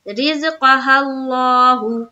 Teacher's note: پیش کو جلدی پڑھیں تھوڑا بھی نہ کھینچے، معروف پڑھیں مجہول آواز سے بچے · بولیں گے، لفظ اللہ کا لام پر ہوگا، اس لیے کہ لفظ اللہ کا لام سے پہلے زبر ہے، اس لیے لفظ اللہ کا لام کو پر پڑھیں گے